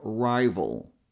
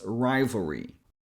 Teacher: So we go from the v sound, which you can make by touching the lower lip on your upper front teeth, and adding a little bit of voice, and we go straight to the dark L sound. You know, the L we make by adding a bit of pressure in the back of the tongue